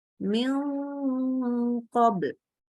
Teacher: Di sini dengungnya harus tebal. Kenapa? Karena ketemu qaf. Qaf itu salah satu huruf isti'la, tebal.